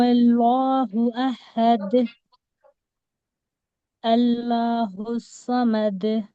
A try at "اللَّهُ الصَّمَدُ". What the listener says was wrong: موٹا کریں. اللہ الصمد. تین نہیں ہے سواد ہے نا تو اس کو موٹا کرنا ہے. سومد سومد. لام کو بھی موٹا کرو. اللہ کے لام کو. اللہ الصمد.